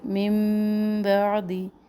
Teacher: من بعدی، نون ساکن کے اوپر میم ہے چھوٹا سا، کیونکہ نون ساکن تنوین کے بعد جب حرف با آ جائے تو یہاں پر نون کی آواز میم میں بدل کر ہم انقلاب کرتے ہیں اور یہاں پر ایک الف کے برابر ٹھہرتے ہیں